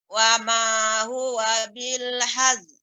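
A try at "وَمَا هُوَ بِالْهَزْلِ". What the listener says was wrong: Hazl. Zainya huruf sifat zai ini lebih diperbanyak. Hazl.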